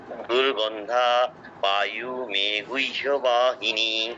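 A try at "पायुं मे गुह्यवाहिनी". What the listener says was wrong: পায়ু মে নয়, পায়ুম অনুসারে উচ্চারণটা করতে হবে, পায়ুম মে গুহ্য বাহিনী।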